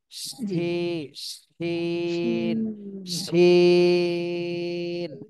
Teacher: শিনের ক্ষেত্রে কিন্তু বাতাস বের হবে এবং শ্বাসা শব্দ হবে